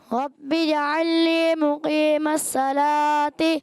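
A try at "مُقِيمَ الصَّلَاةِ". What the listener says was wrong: مقیم صاد، صاد کو موٹا رکھنا ہے. مقیم الصلاة. صلاتی.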